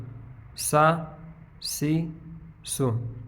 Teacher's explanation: یعنی سیٹی کی آواز میں آئے گی لیکن موٹا نہیں کریں گے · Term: سین